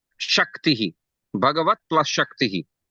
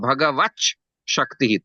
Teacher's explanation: Sha is a Talabya Varna. So, Ta, Dantya and Sha is Talabya. Ta will also become Talabya.